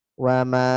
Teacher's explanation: Wa ma, wanya tipis, manya panjang 4.